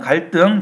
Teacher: 등도 한자예요. 그러니까 한자어 받침 리을 뒤에 디귿으로 연결되는 놈이 된소리로 됐어요.